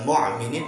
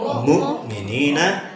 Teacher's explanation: Mukminin pakai hamzah, bukan ain, bukan mu'minin tapi mukminina.